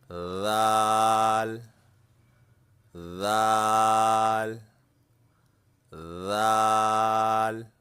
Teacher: जबान की नोक और ऊपर के सामने वाले दांतों की नोक पर रखना है।